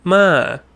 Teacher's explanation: we're going to go up and we're going to go down. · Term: falling